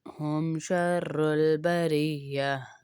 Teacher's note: تا کا وقف جو ہے وہ ہا میں بدل جاتا ہے. جب بھی تا کے آگے آیت ہو یہ گول تا اور اس کا وقف کرنا ہو تو وہ ہا میں بدل جاتا ہے.